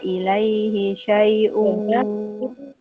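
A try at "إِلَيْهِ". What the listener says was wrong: Ilaihi hanya pendek, Mbak.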